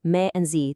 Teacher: those last syllables me and z, they're totally unstressed. They're quick. They're light. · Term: neutral tone